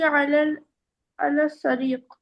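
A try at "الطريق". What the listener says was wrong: अल तरीक, अल तरीक, सीन और ता आपने मिला दिया। या तो अल शारिया कीजिए अगर आप सीन से बोलना चाह रही हैं तो, या फिर अल तरीक।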